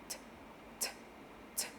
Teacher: t so what we're doing is a t sound it's a it's a non vocalized sound and we're just flicking the tongue for an English T at the back of the teeth